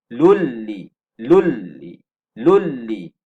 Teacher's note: Cara baca, masukkan bunyi nun mati ini dalam lam. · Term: idgham bila gunnah